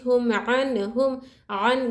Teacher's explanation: یہاں پر ہم نون کے آواز کو کیا کر رہے ظاہر کر کے پڑھ رہے، اخفا نہیں کر رہے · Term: اظہار کا قاعدہ